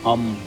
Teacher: it is a pure nasal resonance following a vowel, produced entirely within the nasal cavity without the lips or tongue closing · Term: Anusvara